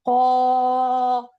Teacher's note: अगर मैं कौफ के साथ पढ़ रही हूं तो क हैवी हो जाएगा